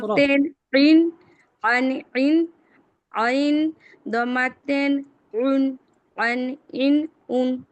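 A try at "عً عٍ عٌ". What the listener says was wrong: মাশাআল্লাহ, কিন্তু একটা একটা জিনিস খেয়াল করবেন যে আইনটাকে এত শক্ত করার দরকার নাই যার কারণে আইনের উচ্চারণটা বিকট শোনা যায়, সেরকম না।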